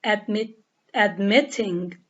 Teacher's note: we have stress on the second syllable